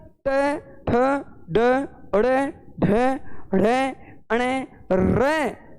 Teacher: क्योंकि मूर्धन्य से अभिप्राय है मुड़ जाना। जब हम ट वर्ग, इस वर्ग का उच्चारण करते हैं तो अपनी जो जीवा है वो आगे से मुड़ जाती है